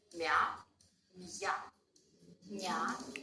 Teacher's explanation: The soft sign doesn't allow us to blend the 2 sounds together. So the y sound in ya will reappear.